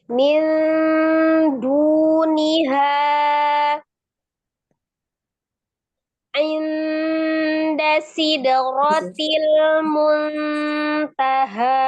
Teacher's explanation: Jadi secara makhraj di huruf nun itu kan ujung lidahnya bertemu dengan gusi atas ya, ujung lidah bertemu dengan gusi atas ya, hampir mendekati ya dengan makhraj huruf ta, dal dengan to ya, yang sama-sama ujung lidahnya bertemu dengan tempat tumbuh gigi dari atas. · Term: ikhfa